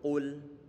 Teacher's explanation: Huruf qaf saat diucapkan dia didhammahkan, maka perlu untuk bibir dimonyongkan ke depan. Kemudian lamnya dia dalam kondisi normal lagi tanpa dimonyongkan. · Ini qafnya tentunya dia tebal karena dia termasuk huruf isti'la yang dalam pengucapannya adalah pangkal lidah naik ke atas.